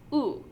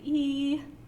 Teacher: So oo is an example of a rounded vowel. E is an example of an unrounded vowel.